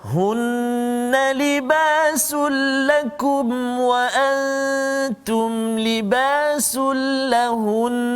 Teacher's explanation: nun bersabdu, mim yang bersabdu kena dengung dua harakat